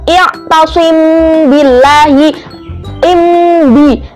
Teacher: mim sukun ke ba-nya itu dia disamarkan dan disamarkannya itu di bibir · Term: ikhfa syafawi